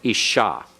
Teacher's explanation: the sheen has to be pronounced twice. To close the first syllable, ish, and to begin the next one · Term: doubling dogish